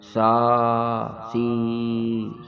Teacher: دانتوں کے درمیان میں زبان کی نوک آئے گی نرمی سے